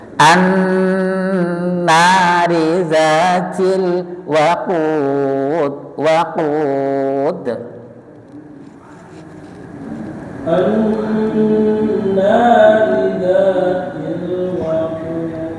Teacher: Itu juga sama qafnya ya. Qafnya juga masuk ke pangkal lidah